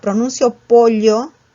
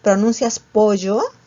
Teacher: en la sierra sí se pronuncia la doble L, pero en la costa se pronuncia la Y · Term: yeísmo